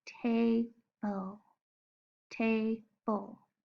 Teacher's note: there is a quiet vowel sound called the schwa sound right before the sound that you hear for the L.